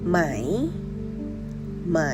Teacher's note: It is the rising tone, so your pitch go up at the end.